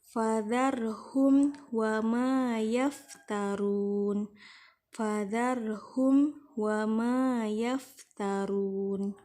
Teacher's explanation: Mim mati bertemu dengan huruf waw harus dibaca dengan jelas, izhar syafawi.